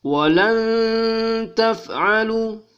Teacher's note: nun sukun bertemu dengan huruf ta, maka berdengung dua harkat